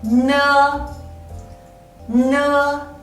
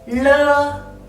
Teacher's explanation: When you pronounce ne, the airflow will come from your nose. When you pronounce le, it will come out from the 2 sides of the tongue in the mouth instead of from the nose. · the only difference is that n is the nasal initials and l is non-nasal initials